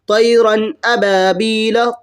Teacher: اظہار کا معنی آتے ہیں ظاہر کرنا، وہ مطلب دکھانا ہے۔ ناک کی طرف آواز نہ جانی چاہیے بلا غنہ، یعنی اس میں غنہ نہیں ہوگا اور جلد پڑھا جائے گا، اس کو اظہار کرتے ہیں۔